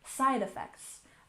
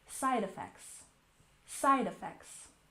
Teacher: Emphasize the first syllable